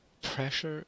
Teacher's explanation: we close the lips and then we release it so the place is the lips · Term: plosive sounds